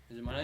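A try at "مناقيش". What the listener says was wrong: You don't say the K.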